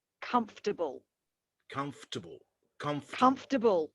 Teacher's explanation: i'm not putting any vowel sound in between the f and the t i'm removing it all together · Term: remove the schwa altogether